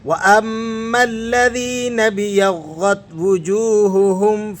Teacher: نون کو آپ نے با سے ملانا ہے اور الف کو بیچ میں سے گرا دینا ہے